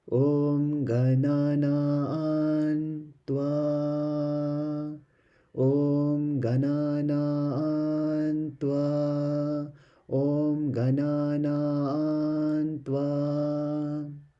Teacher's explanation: if there is a T, it will change the M to a N. So we then have Gananaan.